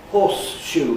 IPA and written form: ˋhɔːsʃuː (horseshoe)